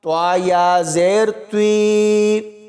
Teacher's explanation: یہاں پر توا کو یا کے ساتھ ملائیں گے تو یا مدہ ہوگی اور توا کو پر یعنی موٹا پڑھا جائے گا